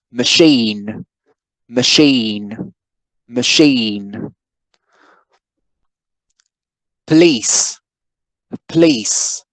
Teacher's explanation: the first syllable isn't stressed